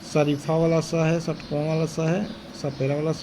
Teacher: तो इसमें क्या होता है, संघर्षी में से घर्षण हो रहा है कहीं पर, ठीक है, तो जिन व्यंजनों के उच्चारण में घर्षण महसूस होता है और वायु मार्ग संकीर्ण होता है उसको संघर्षी व्यंजन कहलाते हैं। इसमें हवा रगड़ के साथ और उष्मा लिए हुए निकलती है, इसलिए इन्हें उष्म व्यंजन भी कहते हैं।